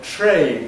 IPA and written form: treɪn (train)